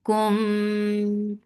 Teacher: For dhamma circle lips, and there is idgham shafawi. So idgham shafawi gets akmal gunna.